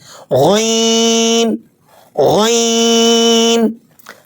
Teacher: حلق کے اوپر والے حصے سے بھاری آواز کے ساتھ اسے پڑھیں